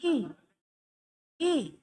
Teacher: ऐ बोलो, ऐ में कैसा खुला है, अच्छा अब ई बोलो, ई में खुला है कि बंद है? बिल्कुल बंद टाइप का है ये ई